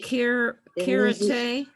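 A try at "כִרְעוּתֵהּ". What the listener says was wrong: Hirute. Okay, so after the resh is an ayin, and that's silent. So we're gonna just pronounce the letter next to it, which is u. That's vowel. Hir u te. Okay, but it's a chaf, not a kaf. So it's going to be hirute.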